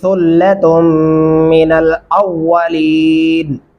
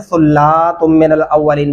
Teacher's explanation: यहाँ पे बहुत सारे लोगों को मैंने देखा है कि वो गलती करते हैं, सुल्ला तुम मिनल अव्वलीन पढ़ते हैं, जो कि गलत है। लाम को लंबा नहीं कर सकते और ताक के ऊपर गुन्ना करना है।